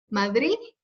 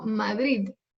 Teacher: muchos madrileños no pronuncian la de